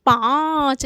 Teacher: पा बोलने पे मुंह और नाक दोनों पर बल जा रहा है ना · देखिए इसमें पा पे अंग वो चंद्र बिंदु लगा है ना, अनुनासिक लगा है, तो इसको कैसे उच्चारित करेंगे, पाँच। देखिए पा बोलने पे मुंह और नाक दोनों पे बल जा रहा है